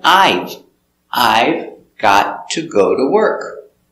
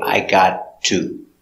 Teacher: but in America we don't pronounce the V